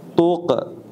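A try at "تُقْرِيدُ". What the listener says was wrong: Qafnya tebal. Tuqo. Qafnya tebalkan. Tuqo. Tuqridu.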